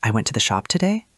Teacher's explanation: And there is a feature called high rising terminal, a rising intonation at the end of statements that can sound like a question to ears trained on British or American English. So an Australian speaker says, "I went to the shop today." And it sounds like, "I went to the shop today?" Like a question.